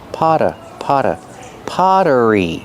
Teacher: the Double T makes a fast D sound because it's between vowels